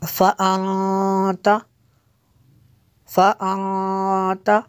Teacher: نون ساکن ہے تو یہاں پہ اخفا ہوگا، نون ساکن کے بعد حروف اخفا میں سے ہے